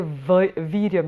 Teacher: teeth have to come on the lips so it's a ver sound